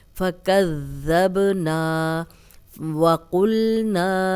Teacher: قل واو پہ پراپر ہونٹ گول کریں، قلنا قوف موٹا ہے